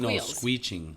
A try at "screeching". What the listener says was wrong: Screeching is not a word. No, you said squeeching.